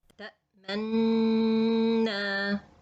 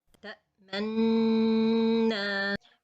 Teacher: Ishmam is circling the lips without sound, without a dhamma sound at all. The one who watch and he can see with his eyes, he can see this dhamma. · Except in this word, you can feel there is a dhamma sound on it. Not that clear as a regular dhamma, but you can feel it in this word only.